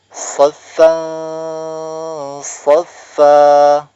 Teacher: Cara membacanya disamarkan dengan tempo gunah yang dipanjangkan. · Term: ikhfa hakiki